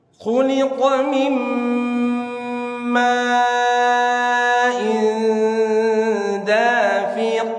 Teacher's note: Mim tahan gunnah, in tahan ikhfa dengan gunnah.